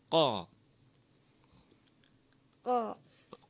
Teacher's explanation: qaf ini di pangkal lidah mengenai langit-langit lunak